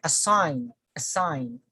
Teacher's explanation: So the stress falls on sign.